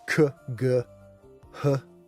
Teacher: These are all done in the back of the throat.